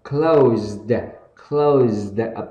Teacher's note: âm này sẽ là âm z và âm d ở cuối và âm long âu